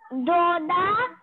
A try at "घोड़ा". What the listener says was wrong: Ghoda. It is Doda nahi. Dekho, dha means this letter. Dha. It is ga. Ghoda.